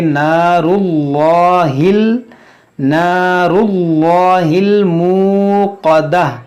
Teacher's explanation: अल्लाह अज़्ज़ा वजल के नाम से पहले यानी लाम से पहले ज़बर हो या पेश हो तो इसको मोटा करके पढ़ेंगे